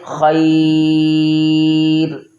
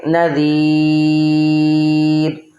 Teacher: خیر پر را پر پڑھا جائے گا اور نذیر پر را کو باریک پڑھیں گے